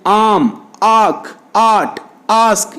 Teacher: It occurs in all positions in English. This vowel A is a back open unrounded vowel. The back of the tongue goes to the position of hard palate, and as well the tongue is open and lips are unrounded.